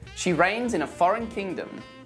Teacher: we do pronounce the G in kingdom, but in rapid speech it often gets dropped